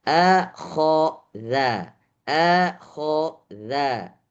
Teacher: Jadi ada a tipis, kho tebal, za tipis lagi.